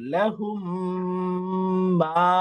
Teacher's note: মিম সাকিনের পরে আসে তাহলে মিমকে মিমের সাথে মিলিয়ে ইদগাম করে গুন্নার সহিত পড়তে হয়। এটার নাম হচ্ছে মিম সাকিনের ইদগাম।